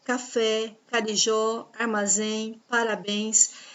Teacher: a última sílaba é a mais forte a sílaba tônica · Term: oxítonas